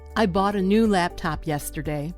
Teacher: those words would be bought, new, laptop, and yesterday. Those words get the stress. The words I and a are much less important.